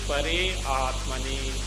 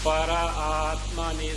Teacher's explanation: Pare Atmani by Sandhi becomes Para Atmani. Prithivyaadyaha Visarga gets dropped because of the vowel that follows.